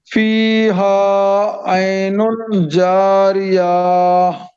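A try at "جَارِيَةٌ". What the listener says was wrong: اتنا کھینچیں گے تو کام نہیں چلے گا. میں نے کھینچ سکتے نہیں بولا تھا. میں نے بولا تھا گولتا کو ساکن بنانا ہے.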